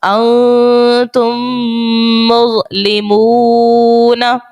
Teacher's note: میم ساکن کے بعد ایک اور میم آپ کو نظر آ رہی ہوگی، تو ہم یہاں پر ادغام شفوی کا قاعدہ لگائیں گے اور غنہ یہاں پر کریں گے